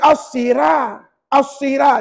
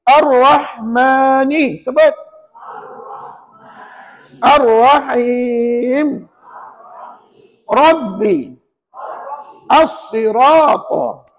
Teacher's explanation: ra itu baris satu di atas maka layak disebut ra tafkhim